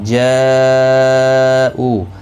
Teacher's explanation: جا مد متصل ہے، 4 الف کی مقدار کے برابر کھینچ کر پڑھیں گے